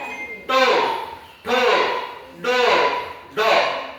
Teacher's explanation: ट वर्गाच उच्चार स्थान कोणत आहे मूर्धन्य